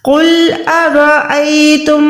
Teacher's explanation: again قوف موٹا ہو گیا، را پہ زبر ہے تو را کو بھی ہم موٹا ادا کریں گے